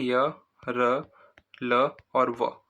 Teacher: अंतस्थ व्यंजन जो कि अल्पप्राण व्यंजन भी होते है और साथ में सघोष भी होते है